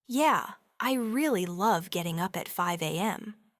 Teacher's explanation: they say it with a flat, unenthusiastic tone," they're almost certainly being sarcastic.